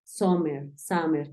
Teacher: algunas personas tienden a pronunciarla más como una a como una O